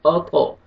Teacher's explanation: طا کو موٹا بھی کریں گے اور قلقلہ بھی کریں گے، ڈبل ساؤنڈ آئے گا